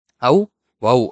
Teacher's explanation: ஔ, வௌ அப்படின்னு சொல்லலாம். 2 மாத்திரை அளவு முழுமையா ஒலிக்கும்பா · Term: ஔகார எழுத்து